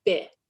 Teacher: it sounded like they voiced the initial consonant and they dropped the final consonant